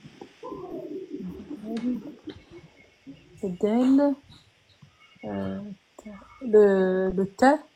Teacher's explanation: Donc c'est déjà sur les dents du haut. L'extrémité de la langue s'appuyant sur la racine des incisives supérieures.